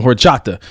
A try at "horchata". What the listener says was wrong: Don't pronounce that H.